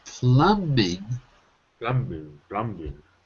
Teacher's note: there's no B there's no B say it without the B · Well, there's no B. The B is silent.